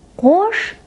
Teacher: Звучит твёрдо, так как в нём твёрдый гласный звук о